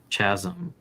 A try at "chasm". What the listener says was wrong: The H is silent.